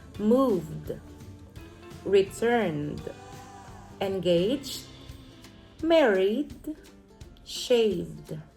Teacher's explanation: the D is blended together with the previous consonant, and it is not pronounced as an extra syllable. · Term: group D